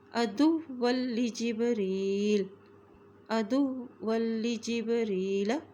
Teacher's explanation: قل ما کان، قل ما کان عدوا لجبریل، دال کی پیش کو واو کے ساتھ ملائیں گے کیونکہ واو کے اوپر شد ہے۔ اسی طرح واو کی دو زبر کو لام کے ساتھ ملاتے ہوئے پڑھیں گے